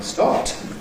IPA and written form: stɒpt (stopped)